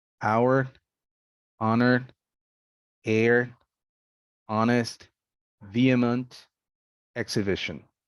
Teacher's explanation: the h sound is never pronounced in these words